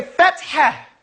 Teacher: Fat ha. And that ha has to come out of your mouth with strength, with shiddah.